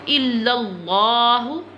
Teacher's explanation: لام will be bold because standing زبر is on the lam, so bold it. الا اللہ، موٹا کرنا ہے لام کو.